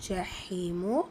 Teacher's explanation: யா மத்தா 2 ஹரக்கத்தளவு நீட்டம் கொடுத்து ஓதணும்